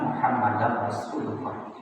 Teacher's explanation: Berikutnya pada wa asyhadu anna Muhammadar, sekalipun tidak ada tasdid pada huruf ra, mesti memasukkan bunyi tanwin ke dalam huruf ra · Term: idgham bila ghunnah